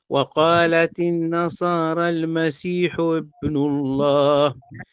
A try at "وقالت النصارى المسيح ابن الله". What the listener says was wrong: ابن هنا همزة وصل ينتقل إليها حركة الحرف الذي قبلها وليست همزة قطع قل هكذا حبن الله وقالت النصارى المسيح حبن الله وقالت النصارى المسيح حبن الله الكلمة لا لا لا أخطف الكلمة حتى لا تكون همزة قطع هذه همزة وصل همزة وصل مرتبطة بالحرف الذي قبلها في حركته إن تخطفها خطف حتى لا السكتة اللي تحصل منك هذه تقلبها لهمزة قطع وقالت النصارى المسيح ابن الله